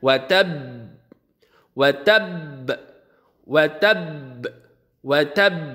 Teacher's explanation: Huruf ba ini dari aspek udara dia adalah jahar, artinya tidak keluar. Tidak mengalir udaranya, kemudian dia itu syiddah, tidak mengalir suaranya. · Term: qalqalah kubra